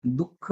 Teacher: एकदम सोडली जाते म्हणून त्याला काय म्हणतात विसर्ग असं म्हणतात आणि विसर्गाचा उच्चार करत असताना कसं होतो काहीसा ह सारखा उच्चार होतो